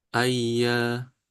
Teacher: bukan dilamakan tapi ditekan